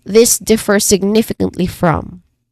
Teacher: So all vowels in all syllables for significantly are all short.